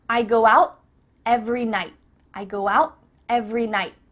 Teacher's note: your tongue is at the top of your mouth you're about to make the T sound but no air goes through so it's just stopped at the top of your mouth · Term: cut off the T